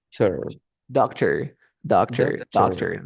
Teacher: La última no es un tor, sino que tenemos el símbolo de la schwa.